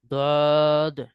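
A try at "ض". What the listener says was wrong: মুখ পাশ করে ফেলেছেন কেন মুখ উপর নিচ করেন একদম শুরু থেকে শেষ পর্যন্ত উপর নিচে রাখবেন এইভাবে বদ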